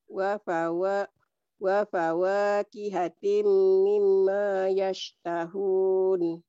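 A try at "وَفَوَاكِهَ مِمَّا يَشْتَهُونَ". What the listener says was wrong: Wa fawakiha mimma nggak ada pihatin. Wa fawakihat nggak ada tinnya di sini mah. Wa fawakiha.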